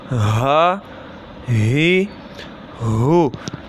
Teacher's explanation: یہ والا ہا جو ہے یہ حلق کے درمیانی حصے سے ادا ہوتا ہے